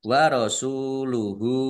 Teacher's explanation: Domir ha domah terbalik mad silah qosiroh dibaca panjang dua harakat. · Lam fatah berdiri mad thobi'i panjang dua harakat. Warasuluhu sin domah wawu sukun mad thobi'i panjang dua harakat